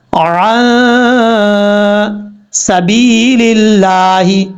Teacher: آپ نے یہاں سے غنہ کرنا ہے، جیسے ہی غنے کی آواز نکالنی ہے، آواز کو ناک میں چھپانا ہے، ویسے ہی آپ نے ساتھ ساتھ اپنے ہاتھ کی کسی فنگر کو، کسی انگلی کو آہستہ آہستہ بند کرنا ہے، پھر کھولنا ہے۔ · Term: اخفا